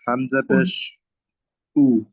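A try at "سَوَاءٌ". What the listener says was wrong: হামজা দুই পেশ, হামজা দুই পেশ, পেশ না, হামজা দুই পেশ।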